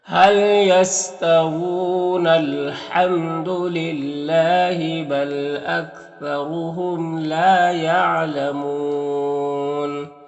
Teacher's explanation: دیکھیں یہاں پر ملا کر پڑھیں گے تو یہ حمزہ وصل ہے، اگر ملا کر پڑھیں گے تو یہ حمزہ وصل گر جائے گا، نون ڈائریکٹ لام سے ملے گا، ملا کر بھی پڑھ سکتے ہیں، وقف بھی کر سکتے ہیں۔ · بل اکثرهم، را کو پر پیش اور را کو پر پڑھیں گے، میم اظہار شفوی ہوگا، لام الف مدہ ہے اور یہاں پر واو مدہ ہے تو وقف کریں گے تو مد عارض وقفی ہوگا